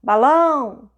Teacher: Você viu qual que ficou mais comprida? Qual que parece que levantou mais? Foi o lão. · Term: sílaba tônica